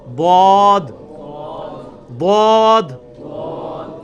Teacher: ضاد یعنی لیفٹ زبان کا کنارہ اوپر کے دانتوں کی جڑ میں لگانا ہے, یا دونوں کو پیرلل میں دونوں کو بھی لگا سکتے ہیں.